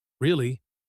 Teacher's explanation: soft falling pitch this means sympathy